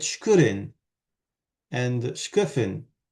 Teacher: However, what Lubera makes a big deal of is that when the word begins with a cluster, shk, and the clusters there are always sibilant plus something, then instead of stressing the second weak vowel, you stress the first weak vowel